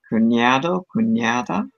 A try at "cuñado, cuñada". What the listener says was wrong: Mm-hmm. Good job.